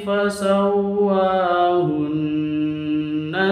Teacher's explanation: Fasawwahunna di sini ada nun tasydid berlaku gunnah disebut dengan gunnah maka dibaca dengung tiga ketuk.